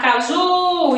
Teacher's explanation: Quando eu chamo uma pessoa, essa sílaba que demora mais eu chamando, então ela vai ser a sílaba tônica. Se eu chamar caju, então a sílaba que demora mais, o ju.